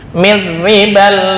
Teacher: Ra ketika dibaca kasrah itu dibaca tarkik